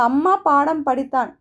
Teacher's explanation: மகர மெய்யெழுத்து தனக்குரிய அரை மாத்திரை அளவில் முழுமையாக ஒளிக்கிறது